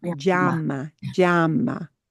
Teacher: Hear that little j? But it's really short.